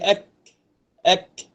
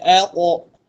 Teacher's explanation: Dan kalau kaf di langit-langit lembut dan keras. Kalau qaf langit-langit lembut saja, yang belakang daripada huruf kaf.